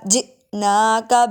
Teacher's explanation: حمزہ ساکن جھٹکا دے کے پڑھیں گے